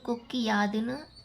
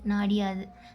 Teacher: அந்த குற்றியல் உகரத்தில் உள்ள உகரம் இகரமாக மாறும். அந்த இகரமும் தனக்குரிய ஒரு மாத்திரை அளவுல இருந்து அரை மாத்திரை அளவா குறைஞ்சு ஒளிக்கும். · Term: குற்றியல் இகரம்